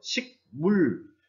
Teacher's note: 뒤에 미음, 비음의 영향으로 기역이라고 하는 것이 비음, 이음으로 바뀐 것이라고 할 수 있습니다.